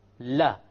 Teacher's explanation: notice that the entire upper portion, la, not just the tip, it goes and it touches the gum of the mouth behind the canines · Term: lam